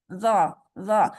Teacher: اپنی زبان کی نوک جو ہے، آگے والا کنارہ، ٹپ آف دا ٹنگ، اس کو اوپر والے دو دانتوں کی ایج سے لگائیں، سرے سے زا لگائیں.